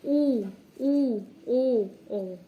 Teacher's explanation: व्रतमुखी जब होता है जब हमारे जो ओष्ठ हैं वो गोल हो जाते हैं।